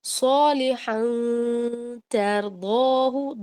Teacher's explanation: اس غنہ میں تا کی آواز جو ہے یا مخرج جو ہے وہ مکس ہوا ہے. ٹھیک ہے، مکسڈ اپ ہے یہ، اس لیے اس کو کہتے ہیں ناقص غنہ، نقص والا غنہ.